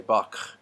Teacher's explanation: A lot of people would say Bach and say that in the back of their throat. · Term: made in the throat